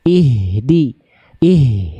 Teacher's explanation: ihnya tebalkan lagi angkat pangkal lidahnya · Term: H besar